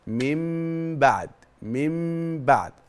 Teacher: بعد نون ساكنه وقع بعدها حرف الباء بقول لك على فكره خلي بالك النون هنا في حاله اقلاب احنا قلبناها حولناها قلبناها خليناها ميم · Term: إقلاب